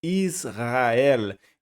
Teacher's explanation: Então eu não estou pronunciando o Shivá que está debaixo do sin. Se ele fosse sonoro, seria Israel, mas ele é mudo, Israel. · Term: Shivá mudo